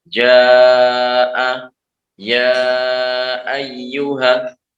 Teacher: Jadi mad dulu, huruf mad dulu, kemudian baru setelahnya hamzah. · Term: mad wajib, mad jaiz